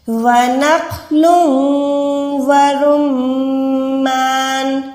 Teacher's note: میم پہ ہولڈ کریں، گننا کریں، ناک میں لے جائیں